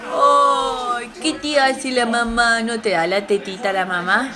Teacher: esa pronunciación y vocalización muy extrema, la entonación muy aguda, muy ascendente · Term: el maternés